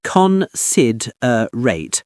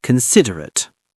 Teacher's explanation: Stress on the second syllable.